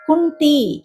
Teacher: సంయుక్తాక్షరం కాబట్టి కు మీద ఆఘాతం పడుతుంది